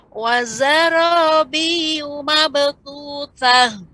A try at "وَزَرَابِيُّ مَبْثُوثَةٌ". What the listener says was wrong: Ya, ra kurang tebal Ibu. Wazara tadi sih. Wazara, ra lebih dinaikkan lagi ke langit-langit lidahnya. وزرابي مبثوثة.